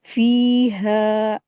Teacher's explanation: हा के साथ अलिफ मद्दा है, दो हरकत खींचेंगे।